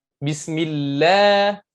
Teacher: Bismillah, la-nya 2 harakat mad asli.